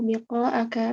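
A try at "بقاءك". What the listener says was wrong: enggak bi, fathah.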